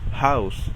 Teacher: una palabra mayormente se pronuncia como una h aspirada es decir no se pronuncia como jota sino como si solamente sacaremos aire suavemente de nuestra garganta como cuando pronunciamos house en inglés